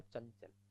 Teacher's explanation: अनुस्वार के बाद च है तो अनुस्वार च के पाच में बदल जाएगा